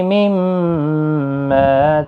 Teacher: میم مشدد پر غنہ ہوگا، الف مدہ بھی ہے، ایک الف کی مقدار کے برابر کھینچ کر بھی پڑھیں گے. اور زبر کی وجہ سے پر پڑھا جائے گا، یہاں پر بھی وقف مطلق ہے، کاف ساکن پڑھا جائے گا.